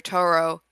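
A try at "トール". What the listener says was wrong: Toru, you're saying Toro, bro. it's Toru, bro. Toru.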